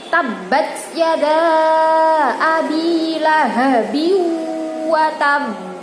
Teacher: Kalau qalqalah kubra ini terletak pada akhir ayat, dibaca tebal, ya, seperti tabbat yada abi lahabi wa tab.